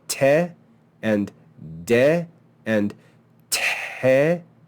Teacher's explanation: We have the sound te and then de, which adds voice, and then te, which adds breath. So because de and te are like te with other elements added, voice and breath, they're all listed together under the te mutes.